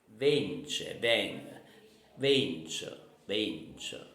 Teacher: we always cut off the last vowel in Neapolitan